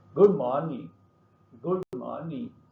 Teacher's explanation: Stress on morning, not good.